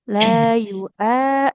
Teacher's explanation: ini ada fathah ketemu alif panjang ya, dua harakat.